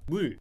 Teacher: 소리가 옆으로 흘러나오면서 소리가 나죠